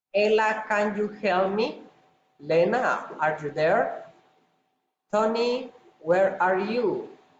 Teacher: Direct address rising intonation.